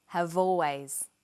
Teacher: we link the final consonant sound v with the initial vowel sound or. Have always.